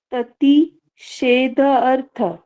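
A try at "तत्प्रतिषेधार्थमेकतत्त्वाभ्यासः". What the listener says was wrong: हाँ, अर्थ के साथ माँ का भी उच्चारण कीजिए हल्का सा। अर्थम, अर्थम का थोड़ा सा हल्का सा।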